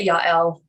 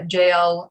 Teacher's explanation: i tend to pronounce j's with a with a y sound a lot of people pronounce it with a j sound